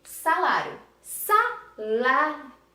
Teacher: Olha só como o I, ele baixa o tom. Se ele baixa o tom, ele é uma semivogal.